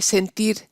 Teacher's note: En sentir, el acento está en la I de tir. La E es átona, por eso no hay diptongo.